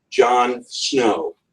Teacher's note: Pairing of two stressed syllables, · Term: spondaic